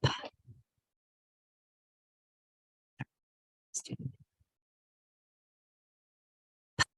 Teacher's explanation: voiceless P. Please have no sound, just air.